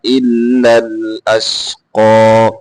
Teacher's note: قاف کو موٹا کر کے پڑھیں گے.